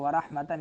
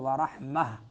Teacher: مودتاً، تنوین کے بعد واو آ رہا ہے ادغام ہوگا مال غنہ۔ ورحمتاً، اگر ملا کے پڑھنا ہے تو ورحمتاً اظہار ہوگا، اور اگر رکنا ہے تا ہا بن جاتی ہے ورحمہ۔ ان، نون مشدد ہے تو غنہ زمانی ہوگا۔